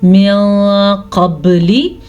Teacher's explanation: ہم نے یہاں پہ اخفا کا قاعدہ ادا کیا ہے کیونکہ نون ساکن کے بعد قاف حروف اخفا میں سے آیا ہوا ہے